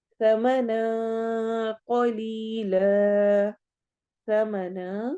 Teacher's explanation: यहाँ पे इख्फा हो रहा है तो नून की आवाज को हम छुपाएंगे